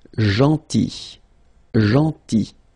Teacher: So remember this final L is not pronounced.